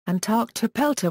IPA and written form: ænˌtɑrktɵˈpɛltə (Antarctopelta)